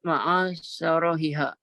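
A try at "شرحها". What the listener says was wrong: Ra-nya sukunkan syarahiha.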